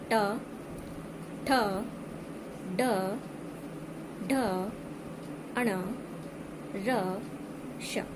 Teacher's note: पूरा ट वर्ग जो है वो मूर्धन्य ध्वनियों के अंतर्गत आता है। ट वर्ग के अतिरिक्त र और श जो ध्वनियां हैं वो भी मूर्धन्य ध्वनियों के अंतर्गत आती है